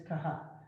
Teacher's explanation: Kaha, which is the aspirated K sound